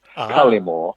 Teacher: I stress the first syllable, Cullimore, and I like the way you sort of stress the first and the third syllables.